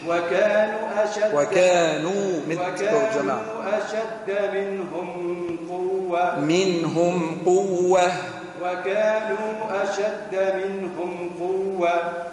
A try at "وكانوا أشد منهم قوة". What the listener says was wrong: منقولش قوة والقوة حب نسمع الها في الآخر. مش قوة قوة الها في الآخر نحب نسمعها بالباقي.